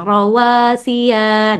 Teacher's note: huruf terakhir yang pendek jangan keseret ya jangan jadi terbacanya panjang